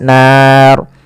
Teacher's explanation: ro di sini kita hukumi dengan ro tafkhim ro yang tebal tidak boleh dibaca dengan ro tipis kenapa karena dia adanya huruf ro yang disukunkan sebelumnya fathah panjangnya karena di sini nanti berkaitan dengan mad adat sukun kalau kita berhenti. · Dan ro di sini kita hukumi dengan ro tafkhim, ro yang tebal. Tidak boleh dibaca dengan ro tipis.